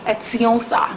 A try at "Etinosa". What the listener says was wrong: The N is silent.